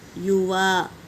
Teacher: اور الف سے پہلے زبر الف مدہ۔ یوا، وا کو کھینچیں گے، یو کو جلدی پڑھیں گے